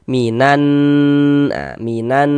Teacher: Nannya yang kita panjangkan, yang kita gunnahkan